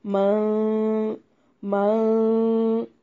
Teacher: نون کی آواز کو ناک میں چھپانا ہے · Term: اخفا